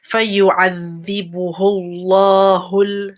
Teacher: So the ha going straight to the lam.